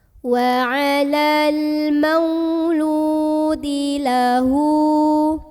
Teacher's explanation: huruf lam yang harokatnya dhammah ini kita panjangkan sepanjang 2 harokat saja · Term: mad tabi'i